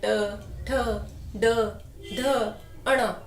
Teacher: उल्टी कहाँ, मस्तक के साइड, मस्तक की साइड हो जाती है। ना तालू को छूती है ना हमारे दांतों को। ये जीभ उल्टी होकर ये शब्द बोलती है, री। री यानी मूर्धा।